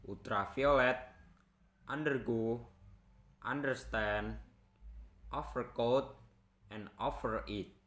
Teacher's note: Word consisting of three syllables that are stressed on third syllables.